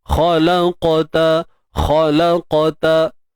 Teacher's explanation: Sifat tebal qaf kekal. Cuma lantunan tu berlaku dalam keadaan yang lemah ataupun sughra lah, kecil. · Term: Qalqalah sughra